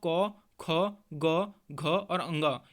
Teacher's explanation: क वर्ग के समस्त वर्ण दोस्तों कंठ्य व्यंजन के ही उदाहरण होंगे, क्योंकि दोस्तों इन सभी का उच्चारण कंठ्य से ही होता है। तो दोस्तों क, ख, ग, घ और अंग, यह दोस्तों पांचों ही हमारे कंठ्य व्यंजन के उदाहरण हैं।